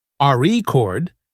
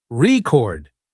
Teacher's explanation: For example, in the word record, if you stress the first syllable, RE chord, it's a noun, but if you stress the second syllable, record, it's a verb